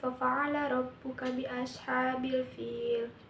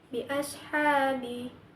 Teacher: Hukumnya adalah mad thobi'i. Karena ada fathah diikuti dengan alif. dibaca panjang dua harakat.